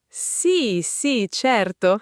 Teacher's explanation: Un sì sì certo entusiasta è un vero sì. Un sì sì certo piatto e lento è un no assoluto.